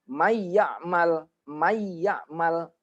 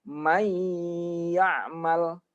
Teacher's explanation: harusnya dia agak dengung dikit. May lamanya itu 2 harokat. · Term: idgham